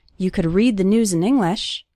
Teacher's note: the stressed syllables are read news and the first syllable of English